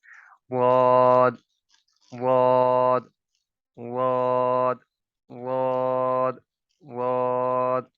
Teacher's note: जबान की दाएं साइड या बाएं साइड ऊपर वाली दाढ़ों के किनारों से लगाएंगे तो अदायगी बिल्कुल ठीक होगी।